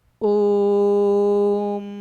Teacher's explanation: अगर जिस मतलब जो भी हम वर्ण स्वर वर्ण का उच्चारण कर रहे हैं, अगर उसका उच्चारण कर रहे हैं और दीर्घ स्वर से भी अधिक समय लग रहा है तो उसे हम लोग प्लुत स्वर कहते हैं